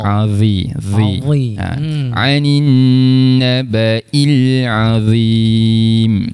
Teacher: Ingat tuan-tuan, huruf dha, sa dan huruf zal. Makhrajnya di bahagian hujung lidah, kita keluarkan sikit, sentuh pada hujung gigi gunting belah atas. Okey. Jadi dha ni perlu kita keluarkanlah hujung lidah kita tu.